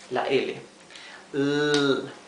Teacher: la punta de la lengua está un poco hacia atrás y apoyada en el paladar